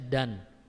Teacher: dikeluarkan dari ujung lidah bertemu dengan gusi atas, bukan pada pertemuan antara gigi seri atas dan akar gigi seri atas dan gusi